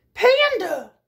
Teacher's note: a makes the schwa sound at the end also